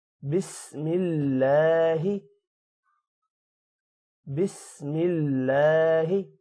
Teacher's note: اللہ کے نام کو کھڑی زبر کی وجہ سے تھوڑا لمبا کریں گے۔